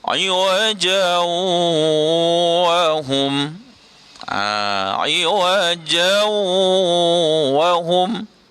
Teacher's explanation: Iwajan wa hum, dengung tapi tak masuk. Dia kena masuk dengan dengung sekali, 2 harakat ya.